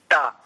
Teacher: टा जब आप इस एक अक्षर का उच्चारण करते हैं तो जहां पर इस समय जिह्वा का स्पर्श है ना, वो आपके तालु के मध्य भाग में नहीं है, मध्य से ऊपर है। और मध्य से ऊपर जहां पर स्पर्श हो रहा है उससे और भीतर कंठ की ओर चले जाइए थोड़ा, इसको मैंने कहा मूर्धा।